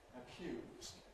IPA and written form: əˈkj̊uːz (accuse)